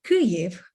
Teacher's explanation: put in stress on the first syllable